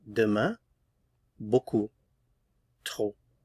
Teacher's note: So final consonants not pronounced here.